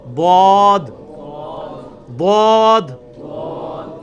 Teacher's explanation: ضاد یعنی لیفٹ زبان کا کنارہ اوپر کے دانتوں کی جڑ میں لگانا ہے, یا دونوں کو پیرلل میں دونوں کو بھی لگا سکتے ہیں. ضاد ایک طرف بھی دونوں طرف بھی جس طرح مرضی.